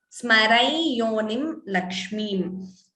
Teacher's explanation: whenever Anuswara is followed by ya, then optionally we could chant it as I.